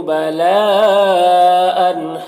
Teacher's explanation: یہاں پر مد متصل ہے تو اسے 3 سے 4 الف کے برابر کھینچیں گے